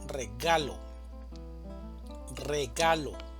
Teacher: Regalo también tiene tres sílabas, una sílaba tónica y dos sílabas átonas. La mayor fuerza de voz va a estar en la sílaba ga, regalo, regalo.